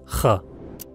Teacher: Жуан әріп. Іштегі ауа тамақты қырнап қырылмен шығарылады. Дыбысы ха. Дәл.